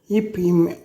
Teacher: இப், இம் ஆகிய இரு மெய்களும் மேல் இதழ்களும் கீழ் இதழ்களும் பொருந்துவதால் பிறக்கின்றது.